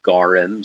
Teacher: it's spelled Gorm, but it's pronounced Gorim. So there is that little helper vowel.